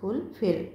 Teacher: the word fulfill is pronounced with more force on the second syllable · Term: stress